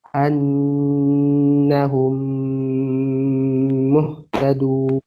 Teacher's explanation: Dan idgham mimi ini kedua mimnya itu ketika berjumpa, cara membacanya, mim kedua harus dibaca dengan tempo gunnah yang agak dipanjangkan, kisaran 2 harakat